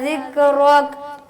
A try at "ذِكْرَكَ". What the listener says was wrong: رو نہیں را را ذکرک ہونٹوں کو گول کریں گے تو رو بنے گا